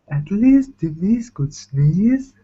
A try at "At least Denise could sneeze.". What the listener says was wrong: At least Denise could sneeze. You hear that? Going down, down, down, down every time. At least Denise could sneeze. Yes, you need to stay up. So when you start reading, you definitely go back into your old pattern. You need to make sure when you read that you are using your soft palate.